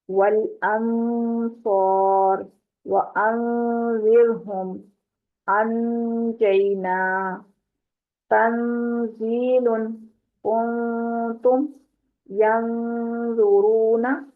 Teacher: نون کے مخرج سے تھوڑا سا پیچھے رکھنا ہے اپنے، نرمی سے زبان کو، تو اس کی آواز جو ہے وہ ناک میں بھی جائے گی، تو وہاں پر اخفا ہوگا۔